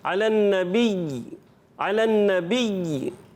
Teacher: یا مشدد رہے گا اور یا ہی کی آواز آئے گی, اس کے علاوہ کوئی ایکسٹرا آواز نہیں ہونی چاہیے